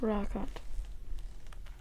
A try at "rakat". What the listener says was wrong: Say it a little bit longer. Rakat.